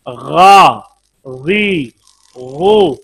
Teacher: हलक का वो हिस्सा जो मुंह के करीब है, इससे गैन निकलता है